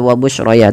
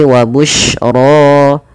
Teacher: ro dibaca dengan tebal rnya dan ini bukan wabusyroya